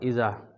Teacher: الف مدہ ہے، الف سے پہلے زبر ہے، تو اس کو ایک الف کے برابر یہاں کھینچیں گے